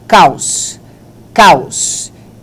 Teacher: Essa aqui é forte. E o O é a semivogal, porque tem o som fraco.